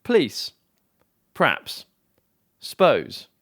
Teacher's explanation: Here are some examples where two-syllabled words have been reduced to one-syllabled words.